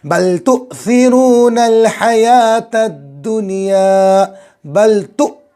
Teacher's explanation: हमज़ा पर जज़म आए तो हमज़ा को झटके के साथ पढ़ेंगे।